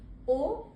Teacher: ओ, औ, ये आ और उ मिलकर के बनता है ओ। दोनों होंठ को गोल सा बना लेते हैं।